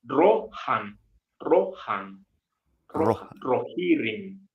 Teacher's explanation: El sonido es solo fricativo, ahí la pequeña fricción.